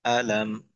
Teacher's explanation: মিম সাকিনের পর বামিম না থাকার কারণে আমরা গুনা ছাড়া স্পষ্ট করে পড়ব